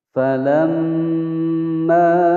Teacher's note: Falamma, fa pendek, la pendek langsung masuk ke huruf mim yang bertasydid, ditekan dan ditahan selama dua ketukan atau dua harokat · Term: gunnah musyaddadah